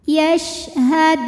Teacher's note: syin tadi punya sifat yang tidak memiliki lawan tafasyi artinya menyebarkan angin di dalam mulut